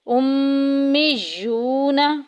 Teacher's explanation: واو ساکن پیچھے پیش، واو مدہ کا قاعدہ جاری ہو رہا ہے، ایک الف کے برابر لمبا کریں گے